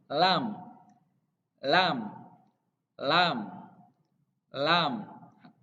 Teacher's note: Jadi diucapkan dari lidah yang bagian atas yang mau menyentuh gigi seri bagian depan.